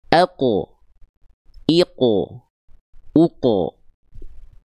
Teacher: sukun dia enggak dibaca cuman sekedar ak ik enggak. Tapi qof-nya dipantulkan.